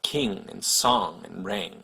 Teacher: English uses it in words like king and song and ring. It's basically an N that you make using the back of your tongue instead of the front.